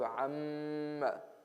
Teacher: This is meme with shadda, so we have a gunna